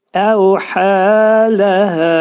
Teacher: Onu çox yumuşaq və incə şəkildə çıxarırıq. Əvhələhə Hə hərfi boğazda deyilir. Boğaz hərfidir, boğazın ortasından çıxarılır və iki səs qədər uzadılacaq. Çünki təbi məddə hərf var.